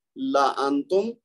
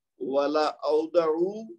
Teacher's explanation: یہاں پہ ہم نے مد جائز نہیں کرنی بلکہ اس کو بغیر الف کے پڑھنا ہے